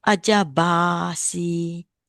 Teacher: There's two ways to recite. One is either you make it long A, another one is you make it heavy sound.